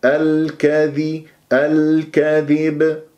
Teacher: تكون اللام قمرية يجب أن يجري فيها صوت فترة زمنية بسيطة نقف على باء ساكنة مقلقلة قلقلة كبرى